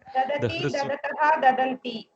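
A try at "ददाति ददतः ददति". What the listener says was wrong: Dadati, dadataha, dadati, something like that. It is one of the tough ganas. Okay? Ramaha pustakam dadati. Ramaha pustakam dadati. Like that it goes. Nakara is not there.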